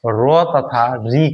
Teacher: उसके बाद है रो तथा री का, क्या है, रो तथा री का उच्चारण स्थान है, किसका किसका, रो तथा री का उच्चारण स्थान है, क्या हो जाएगा, मूर्धा, क्या हो जाएगा, मूर्धा। रो और री का उच्चारण जीभ को थोड़ा मोड़कर ऊपर की ओर तालु के पास किया जाता है